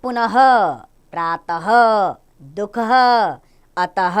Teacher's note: जिस वर्ण का उच्चारण ह के समान होता है अर्थात विसर्ग का उच्चारण ह की तरह किया जाता है